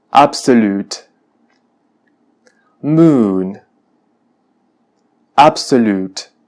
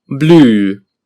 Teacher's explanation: se pronuncia con características similares a la u del español pero con la lengua más hacia el frente cercana al centro de la boca en inglés este es una vocal larga como podemos apreciar y